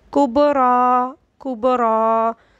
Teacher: را کے اوپر کھڑا زبر ہے تو اس کو بھی ہم کھڑا زبر کی وجہ سے پر ہی پڑھیں گے